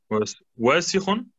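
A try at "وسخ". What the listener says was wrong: Wasichun. Ohne Verlängerung. Wasichun.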